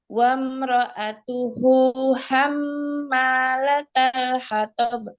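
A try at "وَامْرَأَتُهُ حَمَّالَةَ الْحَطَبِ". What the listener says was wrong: Aywa, coba lagi sedikit hu-nya jangan sampai ya ditekankan, dan juga latal bukan hammalatal, la, hammalatal hatab.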